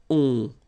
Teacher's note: You don't pronounce the final t, so you get the nasal on.